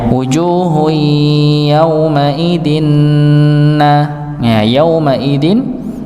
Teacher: tanwin bertemu dengan nun, maka didengungkan sama idgham bi gunnah